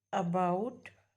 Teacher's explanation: जब आप अबाउट बोलते हो तो अ के लिए आपका मुंह थोड़ा सा ओपन होता है